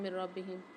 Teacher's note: نون ساکن کے بعد رو مشدد آ رہی ہے، یہاں ادغام بلا غنہ والا قاعدہ ہوگا، غنہ نہیں کریں گے یہاں پر